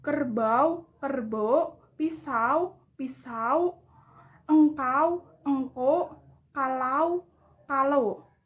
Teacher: Pergantian diftong au menjadi o